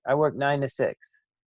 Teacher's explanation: i work nine to six so this is going to have that schwa kind of sound